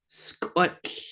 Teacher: So you're still making that T sound, squat, but you're then going into the barred L. So that T is almost, you're still saying it, but it's just really faint.